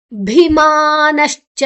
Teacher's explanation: ದರ್ಪೋ ಭಿ ಪೋ ఆయన ಬೊಕ್ಕ ಅಲ್ಲೊಂದು ಎಸ್ ಮಾರ್ಕೊಂಡು ಪಂಡ ಅವಗ್ರಹ ಚಿಹ್ನೆ ಒಂಜಿ ಅಲ್ಪ ಅಕ್ಷರ ಸಂಧಿ ಅನಗ ಬುಡ್ದು ಪೋತುಂಡು ಮಾಯ ಆತುಂಡು. ಭೀಮಾನಶ್ಚ ಭೀಮಾ ಮಹಾಪ್ರಾಣ ಮಾ ದೀರ್ಘಾಕ್ಷರ